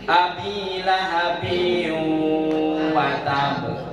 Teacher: Ada tanwin yaitu kasratain ketemu dengan waw. Maka hukumnya adalah idgham. Cara membacanya adalah dimasukkan dan juga didengungkan.